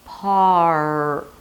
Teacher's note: The tongue curls in the back and creates this tense sound, and that's the R. Par. The tip of the tongue, as I said, should go up, but it can also remain down.